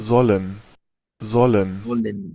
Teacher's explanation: La fuerza de voz está acá, pero el austriaco, su acento pareciera que le da más fuerza a la segunda parte. sollen, Es más, es como ir de zu a len.